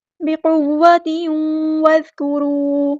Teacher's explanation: ता की जो 2 ज़ेर है, यानी तनवीन है, उसको वाव के अंदर मदगम कर देंगे, इदग़ाम होगा। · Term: इदग़ाम माअल गुन्ना